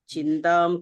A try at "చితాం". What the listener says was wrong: భార్య చితాం, చింత కాదు, చితాం, చితి